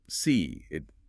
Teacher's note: We sometimes insert a subtle linking sound often a y glide or a wg glide.